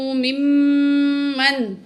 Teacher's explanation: میم کو میم سے ملائیں گے اور غنہ کر کے پڑھیں گے